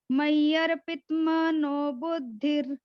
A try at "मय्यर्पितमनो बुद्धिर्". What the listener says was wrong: माता जी आपने पित्त बोला, पित्त में क्या हो गया? त आपका हलंत हो गया, त पूरा गाना है। पित्त मनो बुद्धिर्